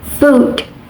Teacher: Manner of articulation is the tongue is raised high and lips are rounded